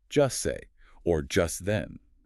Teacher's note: So instead of hearing the distinct hard T in just, you hear the words merge into one sound, just say or just then. The acoustic signal for the T just vanishes.